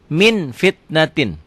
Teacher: bunyi m tapi memang bibirnya kebuka sedikit · sini ada m-nya bila nun mati atau tanwin bertemu dengan Fa bunyi yang berubah menjadi mm akan tetapi mutlak tidak tertutup rapat masih ada udara yang keluar ketika membacanya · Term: ikhfa